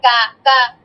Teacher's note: জিহ্বার গোড়া থেকে আমরা একটু আগে বাড়িয়ে, একটু আগে বাড়িয়ে ওখান থেকে কাফটা উচ্চারণ করবো, ঠিক আছে? জিহ্বার গোড়া থেকে একদম উচ্চারণ করবো না কাফটা, একটু আগে থেকে, ঠিক আছে?